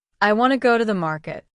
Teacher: The stress is usually on want and market.